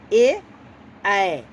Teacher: अब आइए कंठ तालु, यानी कंठ और तालु दोनों का, जैसे कंठ तालव्य कहते हैं इसको, जैसे ए ऐ ये दोनों है, कंठ और तालु दोनों से इसका संबंध है